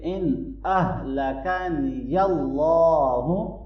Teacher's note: نون ساکن کے بعد حمزہ آ رہا ہے تو ہم یہاں پر اظہار کریں گے۔ ان اہلکنی اللہ، اللہ کے نام کو یہاں ہم موٹا پڑھیں گے۔